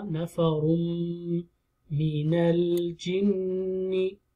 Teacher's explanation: ra is heavy, combined with the meem. Idgham ma'al ghunna.